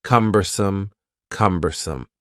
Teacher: has three syllables and the stress is on the first syllable